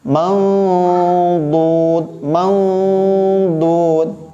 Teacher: Jadi cara baca ikhfa'nya di tepi lidah. Maudud, maudud, langsung ke samping.